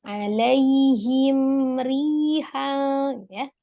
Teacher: Tapi dia hati-hati di mimnya tidak boleh dijedah karena dia tidak sidah. Kemudian jangan dipantulkan karena dia bukan huruf qalqalah. Jangan juga ditahan karena bukan gunnah ya, tapi hanya izhar saja, dibaca dengan jelas. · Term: izhar safawi